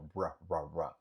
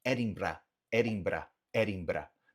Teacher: na Escócia eles não têm esse R gutural que é norte-americano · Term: R alveolar